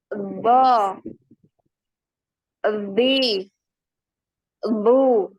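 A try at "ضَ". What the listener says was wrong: Jangan ada bo. Nah, kemudian coba pangkal lidahnya ya. Pangkal lidah tahu kan? Lidah bagian yang belakang. Atau makhrajnya huruf qaf. Itu coba dinaikkan pangkal lidahnya. Bo, ya jadi tebal. Bo. Jadi semua permukaan lidah ini naik. Makanya dia tebal, ya tebal sekali. Bo.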